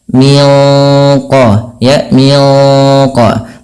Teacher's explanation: Nah, sama sebagaimana yang awal, yaitu ada bacaan ikhfa hakiki. Kita bacanya nunnya disamarkan langsung ke huruf qaf yang dia menebal.